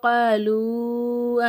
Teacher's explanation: காலு அப்படிங்கும்போது நம்ம நல்லா என்ன செய்யணும், 3 அலிஃபுக்கு நீட்டி உச்சரிக்கணும்